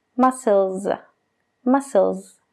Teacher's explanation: Muscle es muscles. Realmente la última S que se añade para formar el plural de esa palabra es casi como una Z. Muscles.